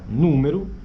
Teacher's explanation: lá no final a gente escreve com o mas na verdade está saindo uma espécie de U número tem o símbolo u né da mesma forma ah que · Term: vogal pós-tônica final